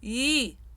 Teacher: it is not wide eee but II up in the roof of the mouth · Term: front closed e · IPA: [e]